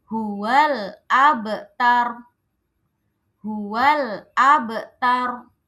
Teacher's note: Huwal abtaru. Nah, ro-nya ini kalau mau berhenti, maka ro-nya harus mati.